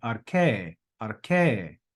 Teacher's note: sort of going up a note and coming back down to the main note